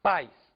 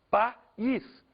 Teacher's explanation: A gente tem o I sendo pronunciado separadamente, com uma força própria